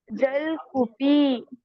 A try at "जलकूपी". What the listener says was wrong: जल, ल पूरा होना चाहिए, जलकूपी, ल पूरा है।